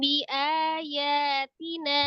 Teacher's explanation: kalau mim sukun ketemu dengan ba ditahan di ikhfa safawi